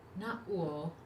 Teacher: Na, long and high, glottal stop, uo, low.